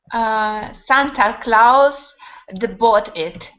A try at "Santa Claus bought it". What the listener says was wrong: Why do you say duh? Like this. Santa Claus. Santa Claus. You want to make apostrophe D, right? So Santa Claus. It sounds like this. It sounds like an id.